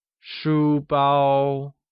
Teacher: School bag, or shu bao, is made of two distinct terms, shu, meaning book or letter, and bao, meaning to hold, wrap, or include. Shu bao uses high-level tones on both U and A and is pronounced as shu bao.